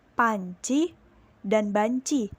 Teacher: contoh fonem p dan b dari bilabial atau posisi dua bibir yang menempel